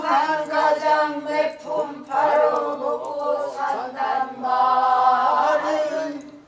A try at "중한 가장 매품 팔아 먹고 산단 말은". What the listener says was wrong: 더 일찍 떨어져야 돼.